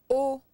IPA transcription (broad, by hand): o